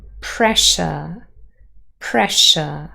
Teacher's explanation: S and Y form Sh in pressure, pressure. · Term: Yod coalescence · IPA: /s/ + /j/ = /ʃ/